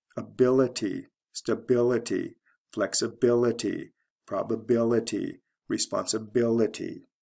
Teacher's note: the syllable right before the ity ending is stressed